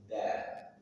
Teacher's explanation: ujung lidah dari permukaan atasnya bertemu dengan gusi gigi seri atas dal. Dan dalam ayat ini dalnya sukun di tengah kata, maka dia punya sifat qalqalah sughra. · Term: huruf dal